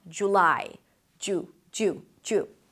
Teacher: In British pronunciation, by the way, you'll hear more of an 'uw' sound